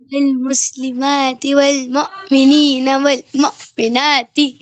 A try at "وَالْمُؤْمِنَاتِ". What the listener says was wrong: झटका नहीं देना है, मुंह ऐसे क्यों झटका दे रहे हैं? वल्मुमिनीन वल्मुमिनात, यहाँ पे ये जो खड़ा जबर आ रहा है और खड़ी जेर, तो उसको हुरूफ मद्दा की तरह खींच कर दिखाएं।